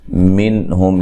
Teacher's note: یہاں نون ساکن کا اظہار ہے، غنہ نہیں کریں گے، نون کو ہلانا بھی نہیں ہے۔